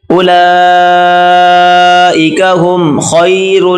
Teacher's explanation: خا کو موٹا کریں، را کو بھی موٹا کر کے پڑھیں گے ، را اور لام آپس میں ملائیں گے، اولئک ہم خیر